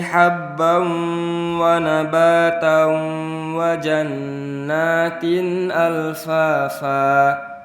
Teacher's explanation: sebelumnya tanwin kemudian bertemu huruf waw, maka itu dimasukkan dan bigunnah dengan ditahan. Wa nabatan itu ditahan. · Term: idgham bigunnah